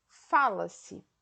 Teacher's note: o tempo desse verbo é o presente e a sílaba tônica está no Fá